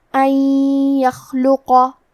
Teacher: ادغام کا معنی ہے حرف کو حرف میں داخل کرنا، تو ہم نون ساکن کو یا میں ملا کے غنہ اور تشدید کے ساتھ یہ حکم کو ادا کریں گے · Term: الادغام بغنہ